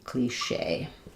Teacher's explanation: So in cliche, the stress is on the shay. Um, because it's from the French.